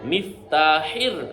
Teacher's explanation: গলার মধ্য থেকে হা